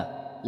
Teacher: ल जिह्वा की नोक जब ऊपर के दांतों की पंक्ति के सामने वाले दांत के ऊपरी हिस्से के संपर्क में आकर वायु के प्रभाव को अवरुद्ध करती है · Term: वर्त